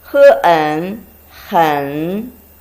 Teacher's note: The next one is a combination of he and en, third tone.